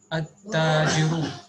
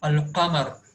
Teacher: here we have to omit lam while pronouncing the word because it starts with hurufu shamsiya